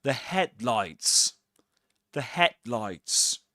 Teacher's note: in the word headlights we accent the first um syllable head.